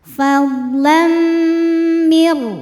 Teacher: Kemudian ada hukum idgham bil gunnah karena ada tanwin fathah menghadapi huruf mim, maka tanwinnya masuk ke mim fadlam serta didengungkan, tahan bunyi m-nya. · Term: idghamunah